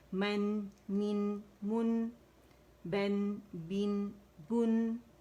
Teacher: اور اس کی جو آواز ہے نا نون کی، وہ ناک میں فیل کرے آخر میں